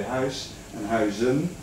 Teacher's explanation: the S goes to a Z in the plural because that's the way how you pronounce it